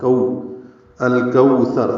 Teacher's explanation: کو واو لین ہے، ہونٹوں کو آگے لائیں گے،